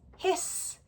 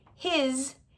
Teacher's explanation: you might always pronounce it as an s, his, instead of a z, his